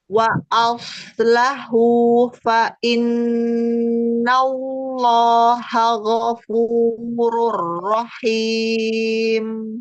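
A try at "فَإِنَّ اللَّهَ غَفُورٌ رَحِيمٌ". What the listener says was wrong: Nanti lafzul jalalahnya ditebalkan lagi. Diangkat lagi pangkal lidahnya ya.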